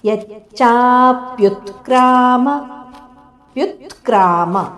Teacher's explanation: ಇಲ್ಲಿ ಯ ದ ಮೇಲೆ ಆಘಾತ ಚ ದ ಮೇಲೆ ಆಘಾತ ಹಾಗೂ ಮುಂದೆ ಪ್ಯೂ ಮೇಲೆ ಸಹ ಆಘಾತ ಇದೆ